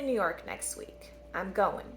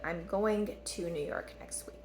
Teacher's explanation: so we're dropping the g right